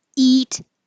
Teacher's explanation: Eat is the highest position your tongue is and it's little um tense pushing forward